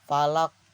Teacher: Nah, di kata al falaq ini dia di akhir ayat ya, jadi falaq. Jadi dia tuh besar, qalqalahnya besar ya, sangat jelas ya, pantulannya sangat jelas.